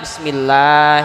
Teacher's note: dibaca tipis ketika lam lafadz Allah dibaca setelah harkat kasrah